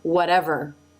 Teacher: the tongue is slightly further back in the final R sound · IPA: ɹ